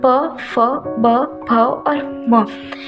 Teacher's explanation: इसका उच्चारण स्थान है ओष्ठ, यानी कि इसका प वर्ग का उच्चारण करते समय हमारे होंठ हिलते हैं।